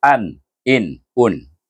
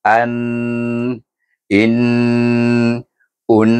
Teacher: Dan bunyi izhar dia satu harakat saja bacaannya. Dia tidak berdengung. Ha tu bunyi izhar an, in un.